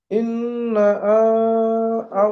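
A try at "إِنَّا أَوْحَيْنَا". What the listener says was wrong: নুনে টান দেন, নুনে টান দেন। ইন্না, ইন্না আও হাইনা। আরো টান দেন। ইন্না।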